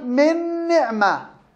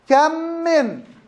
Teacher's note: بسبب التماثل. كم من، أضغمت الميم في الميم بسبب التماثل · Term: الإضغام